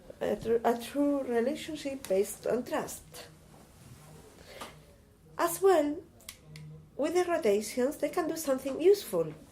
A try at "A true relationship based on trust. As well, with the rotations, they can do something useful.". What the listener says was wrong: No, you didn't pause before that. I want this change. I want pause as well.